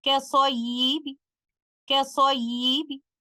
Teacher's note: In the word kasayyibin, upon stopping with a Rawm, because we are going to recite letter ba with 1/3 of the full vowel length of kasra, so there will be no qalqala upon stopping with a Rawm on letter ba